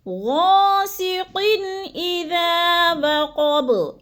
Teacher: اذا کو تھوڑا سا لمبا کر جانا ہے، الف مدہ ہے، اور وقب، با کو وقف کی صورت میں ساکن کر کے